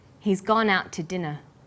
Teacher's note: We stress he's gone out and dinner the two is unstressed